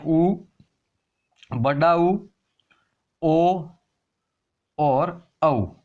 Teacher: वे स्वर जिनके उच्चारण में होठों की आकृति वर्त के समान गोल हो जाती है वर्ताकार स्वर कहलाते हैं।